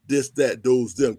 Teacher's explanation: So we can look at our dialect, even how we speak. No TH sound, D, this, that, those, them.